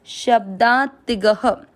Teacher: तीसरा चरण श के साथ आधा ब, शब्दा, ती की मात्रा छोटी, शब्दाती, ग में अ मिक्स करेंगे, शब्दातिग, ग में अ की मात्रा तो विसर्ग को पढ़ेंगे ह